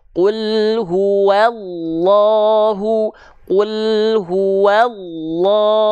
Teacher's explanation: cukup buka mulut saja Ha ha ha maka ketika dilafalkanlu Nah kenapa buka mulut doang tapi bisa vokal O karena pangkal lidahnya naik